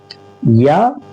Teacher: जबान के बीच वाले हिस्से को उसी के मुकाबिल ऊपर के तालु से लगाएं तो या निकलती